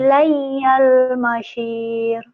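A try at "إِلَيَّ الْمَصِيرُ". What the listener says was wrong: masir. Soalnya jangan masyir, masir.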